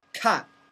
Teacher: Fourth tone going down.